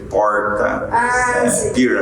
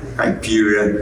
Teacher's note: esse r retroflexo a língua faz uma volta para trás